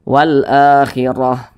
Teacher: Huruf ra yang memiliki tanda baca fathah maka dibaca tabkhim, dibaca tebal. Jadi huruf ra-nya kita tebalkan, pangkal lisan kita itu naik terangkat ke atas ketika kita mengucapkannya.